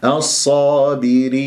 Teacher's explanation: لا تجعل غنة في هذه الياء لما تقف المد العارض للسكون مع إظهار النون أخفض الفك في الياء